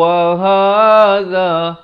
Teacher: ha dipangkal kerongkong, za di hujung lidah